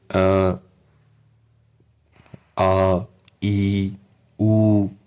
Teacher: हल्का सा घोष हो रहा है, मतलब गूंजनाद कंपन सा फील हो रहा है।